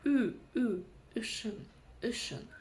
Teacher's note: когда мы произносим букву Ю, изначально слышим и краткую. Так вот, эту и краткую мы убираем, и у нас остается звук Ü.